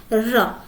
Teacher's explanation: जीभ हमारी जो जीवा होती है ऊपर जाती है, ऊपर जाने के बाद बेलन की तरह मुड़ जाती है, फिर ध्वनि आती है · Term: लुंठित व्यंजन